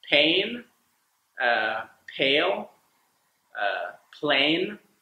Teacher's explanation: a diphthong that combines a and E a so the whole sound is a all in one syllable